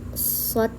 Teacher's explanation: Huruf shad ini berada di golongan alisan dengan ujung lidah di bagian di bagian belakang gigi seri bawah. Suara menebal.